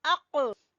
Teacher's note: जबान की जड़ से ये अदा होना है और वहां पर आपने कलकला करना है।